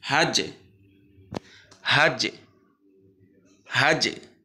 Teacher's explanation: জিমে যখন সাকিন হবে তখন এটা একারের মতো, একটু মানে ইকার বা একারের মতো টোনটা হবে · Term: কলকলা